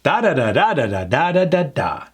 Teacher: That pattern just repeats itself over and over again. Starts high, works its way down with certain keywords that we bump up, but eventually we're ending up down.